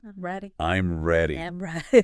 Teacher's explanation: Hear how my voice went down at the end? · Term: intonation